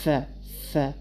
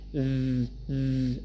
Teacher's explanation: Okay, you can put your hand on your larynx and check that if you say f, f, there is no vibration. But for example, when you say v, v, there is a vibration.